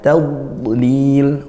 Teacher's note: dad sukun, makhrajnya dad di sisi lidah, baca tebal, istitolahnya memanjangkan makhrajnya, ditunaikan sifatnya, jangan dipantulkan, bukan tad tapi tad.